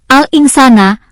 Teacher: Membaca yang benar pada lafal alinsana adalah samar dan mendengung yakni pada huruf nun yang disukun bertemu huruf sin